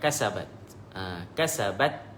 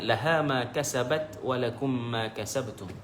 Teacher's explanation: semasa berhenti kita kena lebihkan dari sudut sifat al-hamsu. Maknanya lebihkan sedikit huruf yang bersifat dikeluarkan anginnya. Tapi dalam masa yang sama sifat syiddah, tahan suara tu ada, cuma lebih menonjol semasa berhenti.